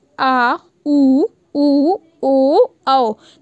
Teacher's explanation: मतलब आपकी जीभ का पीछे वाला जो पोर्शन है, जो भाग है, उसके थ्रू ये बोले जाएंगे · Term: पश्च स्वर